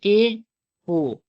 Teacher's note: मुंह जो होता है लगभग आधा बंद रहता है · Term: अर्धसवृत